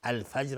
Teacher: الفجر الف لام قمری. جیم قلقله میخواد و را ترقیق است